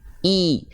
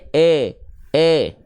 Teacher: sempurnakan harakat kasrahnya rendahkan rahang bawah dan angkat Tengah lidahnya